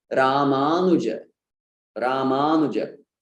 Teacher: That U is really short. I really run through it fast. · the long vowels are neglected and we unnecessarily extended U, which is supposed to be short here